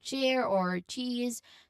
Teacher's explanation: This is the IP symbol for the ch sound like at the beginning of chair or cheese. So it's actually a combination of a t sound and the sh sounds blended together very quickly.